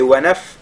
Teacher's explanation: Ici, wanaf, c'est-à-dire, après avoir lu le wa, on lit directement la lettre nun qui n'est pas doublée.